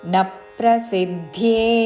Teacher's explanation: న హ్రస్వము దాని మీద ఆఘాత పక్కనున్న సంయుక్త అక్షరంలోని ప ద్విత్వము చేస్తూ